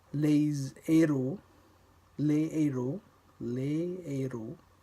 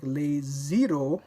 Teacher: No liaison occurs between the articles les and the word that begins with the aspirated H